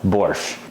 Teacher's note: in Russian there's no T sound in it at all